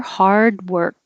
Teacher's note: You don't have to release the D, hard, and you don't have to release the K, work.